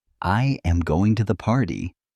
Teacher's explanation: the voice naturally falls at the end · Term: intonation